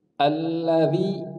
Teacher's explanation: dzal, ujung lidah ketemu sama ujung gigi atas